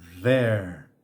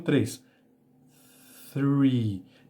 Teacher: Percebe que no TH, no número 3, não vibra a corda vocal, por isso ele é um som unvoiced. É um som surdo, vamos dizer assim, na língua portuguesa.